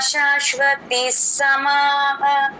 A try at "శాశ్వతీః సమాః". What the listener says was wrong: శాశ్వతీస్తికి కొంచెం దీర్ఘం ఎక్స్టెండ్ చేయండిమ్మ